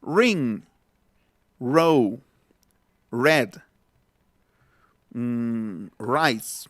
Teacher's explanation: en el inglés es una vibrante múltiple retrofleja, o sea, se va para atrás